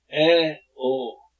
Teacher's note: 입이 반쯤 열린 상태로 발음되는 모음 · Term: 반개